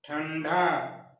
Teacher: ठंडा में टवर्गी ना का उच्चारण हो रहा है